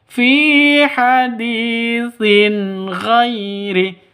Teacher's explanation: Sin ghairi tanwin bertemu dengan ghain. Jelas terang. Kenapa? Karena bacaan izhar halqi.